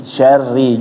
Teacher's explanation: ketika masuk ke ro-nya dia ditekan sedikit biar kedengeran kalau dia tasdid. Min syarri, syarri.